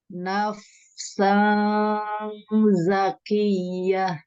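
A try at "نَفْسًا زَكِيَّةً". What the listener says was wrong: Sanza. Ujung lidahnya ke bawahin. Kayak mau baca nafsazza.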